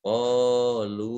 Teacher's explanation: Mat jaiz munfasil boleh dibaca 2 harokat atau 5 harokat.